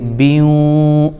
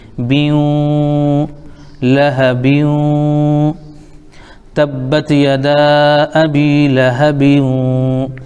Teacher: با کو واو میں ملائیں گے ، بیوں، ناک میں آواز ایک الف روکیں گے، بیوں، لہبیوں، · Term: ادغام غنے کے ساتھ